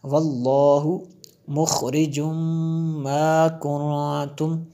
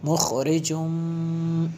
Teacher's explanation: تنوین کے بعد میم ہے حروف یرملون میں سے، تو یہاں پہ ادغام ہوگا